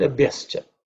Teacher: The 4th letter, pavarga, b, has to be aspirated.